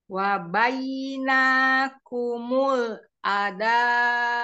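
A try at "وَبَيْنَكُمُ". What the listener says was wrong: Namanya tidak boleh panjang wabainakumul.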